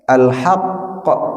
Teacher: qafnya dipantulkan ketika mati, sementara kaf tidak. Nah, kaf itu ada hawa yang keluar. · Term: qalqalah